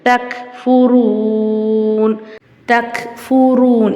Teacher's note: இங்க ரா மேல பேஷ் இருக்குறதுனால ராவ வல்லினமா ஓதணும்